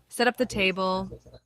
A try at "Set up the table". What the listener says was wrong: That tone, that's my least favorite. El chillón. El quejumbroso.